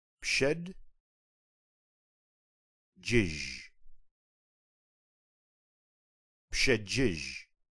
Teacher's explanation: The second syllable begins with the j sound, like the one in the beginning of the English word jazz. This word ends with a j sound, similar to the one found in the middle of the English word for treasure, only softer.